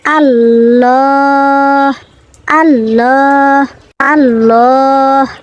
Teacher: এই যে এখানে হাফেজ হু রয়েছে, কিন্তু এখানে আরেকটি তাজবিদ রয়েছে ত, ওয়াকফে মুতলাক, ওয়াকফে মুতলাক, দম না ফেলে আর পড়া ভালো না, ওয়াকফে মুতলাক, দম না ফেলে আর পড়া ভালো না, তাই এখানে দম ফেলতেই হবে। দম ফেললে এখানে হার উপর যে পেশ রয়েছে, পেশটা বাদ দিব আমরা